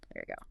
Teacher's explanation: the R at the end of there links smoothly to the Y of you. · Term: Linking